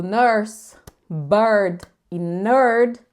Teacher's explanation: é um som de schwa mais R, não é um som de E mais R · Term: schwa mais o R